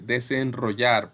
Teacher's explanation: suena como vibrante múltiple